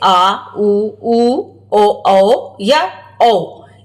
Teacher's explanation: जीवा के पश्च भाग से उच्चारित होने के कारण इन्हें पश्च स्वर कहते हैं।